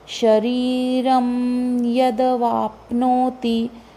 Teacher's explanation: शरीरम र के ऊपर अनुनासिक, तो य अगला वर्ण है, तो य के कारण इसका अनुनासिक का उच्चारण म आएगा।